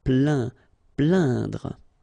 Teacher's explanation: when you combine this A-I-N, you will get the sound un. So really, this nasal sound in your nose.